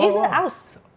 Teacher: Leeds people don't pronounce the H